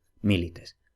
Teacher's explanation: como esa i es breve y la sílaba no es trabada, entonces esa sílaba es breve, por consiguiente el acento se retrotrae a la sílaba anterior